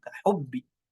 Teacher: cara mengucapkan huruf ba yang bertasydid ini dihentakkan langsung, tidak dialirkan, karena tidak memiliki sifat rokhawah juga atau tidak memiliki sifat hams.